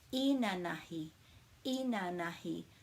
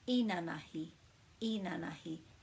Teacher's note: When we don't have a macron or a double vowel, we put the emphasis on the first syllable